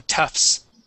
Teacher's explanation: So we're not going to pronounce that T. We're going to go straight to that S sound.